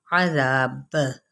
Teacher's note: बा पे जब हम साकिन करेंगे तो बा पर हम कलकला करेंगे